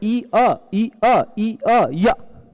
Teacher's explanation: ई के बाद अ आता हो तो ई के जगह पे य हो जाता है, इको यणच। ई के बाद अ आता हो, जैसे ई अ, आप बोलिए ना ई अ ई अ ई अ य, जल्दी बोलेंगे तो य हो जाएगा, है ना।